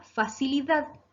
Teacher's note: Palabra aguda, facilidad. ¿Por qué? Porque se acentúa en la última sílaba dad.